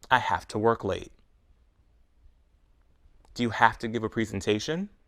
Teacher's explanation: to the words are so closely connected that they blend together we blend have and two together to say hafta we pronounce the two words together as one word hafta